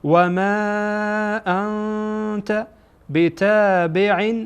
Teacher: و ما انت چون بعد از نون ساکن تا آمده، تا از حروف اخفا هست، اخفا میشه.